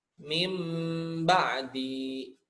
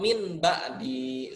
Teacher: huruf pertama yang berupa nun mati atau tanwin diganti atau ditukar menjadi suara mim karena bertemu dengan huruf ba